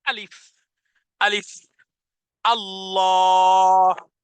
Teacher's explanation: পড়বো আলিফ ব্যতীত তাহলে কিভাবে বলেছি আলিফ আমি স্বাভাবিক আলিফ বলিনি ধাক্কা দিয়েছি সজরে আওয়াজকে কঠিন করেছি এজন্য বলেছি আলিফ আলিফ আল্লাহ স্বাভাবিক যদি আল্লাহ বলতাম তাহলে আর